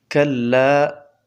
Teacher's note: كلا دا ألف مده دی د یو الف په مقدار براخ کودلی کیږي.